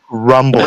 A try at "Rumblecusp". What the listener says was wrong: No, I want the more inflection on the P again, please.